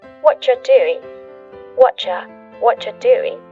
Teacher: Well, actually, we've cut out completely the word R, and the word you just becomes ja. You might notice this too, extra tip that the end of the word doing, that G, also gets cut out.